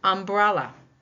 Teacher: The second syllable takes the stress in umbrella. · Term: primary stress